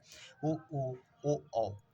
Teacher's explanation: वर्तुलीकृत जिसको बोलने पर हमारा ओठ जो है वृत्ताकार हो जाए